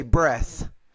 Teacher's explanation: When you have that TH at the end of the word, the voiceless TH, the vowel here is shorter, so you say breath.